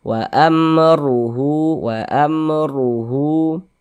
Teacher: tadi di atas harakat fathah ini di bawah harakat dommah maka huruf ro juga dibaca tabkhim dibaca tebal